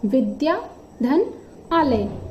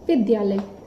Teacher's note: विद्या में द्या में भी आ है और आलय में भी आ है, तो आ प्लस आ के बीच में भी जो संधि हो रही है तो उनका रूप दीर्घ आ हो रहा है और विद्या धन आलय बराबर विद्यालय।